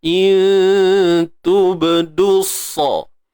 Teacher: ba yang sukun di tengah bacaan, qalqalah sughra, lantunan yang kecil, yang ringan, yang lemah